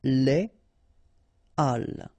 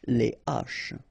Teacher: So, but in that case still, even if you've got this H, okay, it belongs to this aspiré group of words, so containing this H, okay, and it means that you won't have the possibility to make the liaison between your article and your word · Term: H aspiré